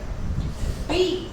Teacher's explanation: बी voiced है, bilabial है, और वो प्लोजिव है, स्टॉप है या प्लोजिव है।